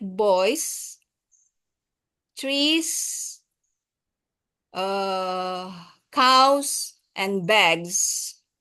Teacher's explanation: when you make the plural s the sound like Z will appear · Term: Z sound